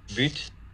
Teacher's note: but the crucial difference here for the Dutch speakers is that there is voicing during the stop closure itself and it actually begins about 85 milliseconds before the release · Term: truly voiced stop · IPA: [bytʰ]